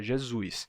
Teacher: Jesus e dependendo do sotaque como é o caso do meu a gente ainda tem uma ditongação de vogal seguida de S em posição tônica no final da a palavra então Jesus se torna Jesus certo essa é minha pronúncia Jesus